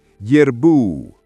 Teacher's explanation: The R should roll slightly if possible. Strong emphasis on bu.